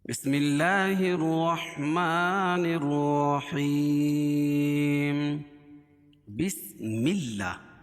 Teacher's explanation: بسم اللہ، اللہ کے لام سے پہلے زیر ہو تو اللہ کا لام باریک ہوتا ہے، اور اللہ لام کے اوپر کھڑا زبر ہے، کھڑا زبر قائم مقام الف مدہ کہ اس کو ایک الف کے برابر کھینچ کے پڑھیں گے۔